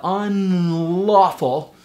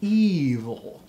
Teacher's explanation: So the front L, unlawful, and the back L, evil.